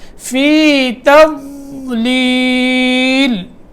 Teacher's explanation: زبان کے کروٹ اوپر کی جو داڑیں ہیں ان کے جڑ سے لگے گی یہ زبان کی کروٹ، تو تب جا کے ضاد ادا ہوگا